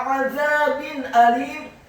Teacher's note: Min azabin alim, kata azabin alim, ainnya ditekankan, keluar dari tenggorokan bagian tengah, fathah 1 harokat, kemudian huruf dha-nya dibaca tipis, lidahnya agak keluar sedikit, fathah 2 harokat karena setelahnya ada alif.